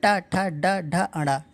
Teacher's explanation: जो टा बोलते हैं, जो जबान का आगे वाला हिस्सा होता है मूर्धन, जिसे मूर्धा बोलते हैं, वही ऊपर लगता है